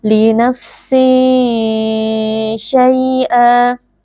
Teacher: tanwinnya kita samarkan lalu kita dengungkan sambil bersiap-siap mengucapkan huruf syin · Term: ikhfa Hakiki, ikhfa hakiki